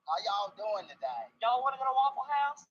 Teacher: much more of a southern drawl. Elongating those vowels a little bit. Saying y'all every sentence.